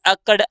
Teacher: हमारी जीभ ऊपर वाले हिस्से को छूकर एकदम नीचे की तरफ आई है